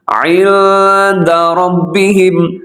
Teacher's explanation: یہاں عند پہ اخفا ہو رہا ہے, آواز کو ناک میں لے جانا ہے